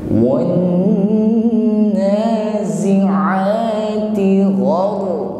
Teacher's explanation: Berikutnya langsung kita dengungkan pada huruf nun yang bertasydid, ya. Jadi tidak terburu. Jadi ditahan sampai berdengung, bukan wan-nazi'a, wan-nazi'a.